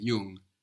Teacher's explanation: it's like the English n g actually so you don't really hear a g here it's more nasal